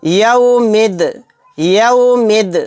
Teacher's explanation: میم کو دال میں ملا دیں گے